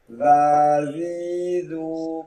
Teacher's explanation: ujung lisan diposisikan di ujung gigi atas